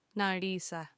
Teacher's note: If you said Naliisa with a short I, it would change the meaning of the words to mean I already came. So the tense will be a different tense in the past.